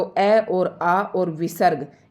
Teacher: अ और आ और विसर्ग इन तीनों का उच्चारण कंठ से होगा